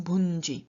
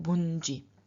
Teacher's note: Well, we have a nasal added before the stem final stop. The stem final stop is a palatal, and therefore the nasal appears as the palatal nasal. And then we add an I at the end of the form, and so we get bunji.